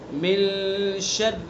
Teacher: من میں اخفا کریں گے، غنہ کریں گے اس کے اندر، ٹھیک ہے؟ یعنی ناک کے باسے سے ادا کریں گے ایک الف کے برابر، من شر، شر کی را کو باریک پڑھیں گے، شرل نہیں پڑھیں گے اس کو، بہت سے اس کو شرل پڑھ دیتے ہیں، من شرل، تو شرل نہیں پڑھنا، من شرل، من شر الوسواس الخناس، ٹھیک ہے؟